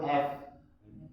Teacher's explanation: Ujung gigi atas bertemu dengan bibir bawah. Sama kita nyebut F. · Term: huruf F